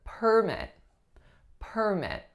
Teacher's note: because I'm stressing the first syllable you know I'm referring to the noun form